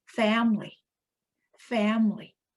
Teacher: Family, 3 syllables. And the stress is on the first syllable.